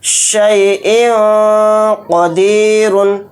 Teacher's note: حمزہ دو زیر ان کہتے ہوئے جو لاسٹ میں ان میں نون کی آواز آ رہی ہے اسی کو ناک میں چھپانا ہے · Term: اخفا